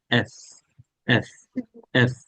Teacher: এই এফটা হচ্ছে উপরের দাঁত নিচের ঠোঁটের সাথে আসবে, এফ। দেখেন, উপরের দাঁত নিচের ঠোঁটের মাংসে আসবে, মধ্যভাগে